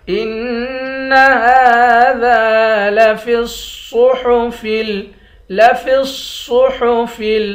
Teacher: إِنَّ هَذَا لَفِي الصُّحُفِ، لَفِي الصُّحُفِ، صاد کو موٹا پڑھیں گے، فا کو لام کے ساتھ ملائیں گے، الف کے ساتھ نہیں ملائیں گے۔